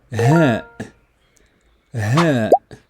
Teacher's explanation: Ha. A soft H sound coming from the chest like in hilal.